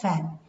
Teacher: initial sound of fan the voiceless labiodental fricative